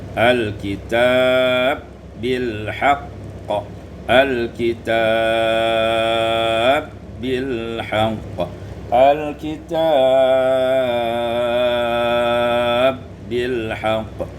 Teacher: Pada ayat yang 105 al-kitaba bil haqq, idghamul ba fil ba, diidghamkan ba pada ba · diidghamkan ba pada ba menjadi al-kitab bil haqq